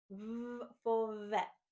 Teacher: we're going to vibrate the sound V as it's voiced